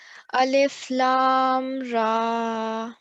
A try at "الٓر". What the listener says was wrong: دوبارہ پڑھے گا، یہ مد کبیر ہے، اس کو کھینچ کے لمبا کر کے پھر پڑھیں۔